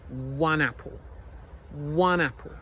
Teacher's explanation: You need to say nap when you say one apple. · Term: linking